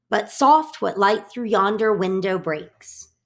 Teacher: Iambic pentameter has 10 syllable lines, and it is an alternating rhythm of unstressed and stressed syllables